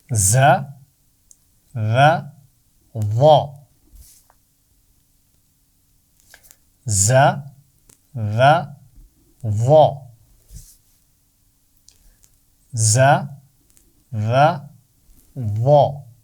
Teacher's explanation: ज की आवाज में सीटी है इन तीनों में से सिर्फ व की आवाज मोटी होती है